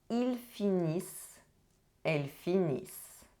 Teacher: the ending -ENT is not pronounced